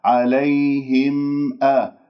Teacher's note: لأنه في الميم يشترك مخرجين، مخرج شفوي ومخرج خيشومي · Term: الميم مظهرة